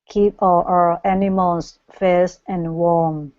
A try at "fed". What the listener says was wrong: this is going to be fed instead of Fez